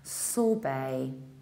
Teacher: We don't say sorbet, we don't say sorbet, sorbet, we say sorbet, sorbet. It's a word of French origin, so final ET is pronounced like A, sorbet. In the British accent, you skip R and you prolong the vowel, sorbet.